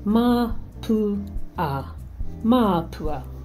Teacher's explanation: Say Māpua with a long vowel in the first A